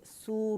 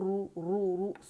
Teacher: سو باریک، رو موٹا، سو رو، یہاں زبان کی جڑ اوپر جائے گی.